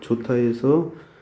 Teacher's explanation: 히읗하고 디귿이 있었는데 이것이 발음된 걸 보면 다 사라지고 제3의 티읕으로 바뀌어서 소리가 난다는 걸 알 수 있어요.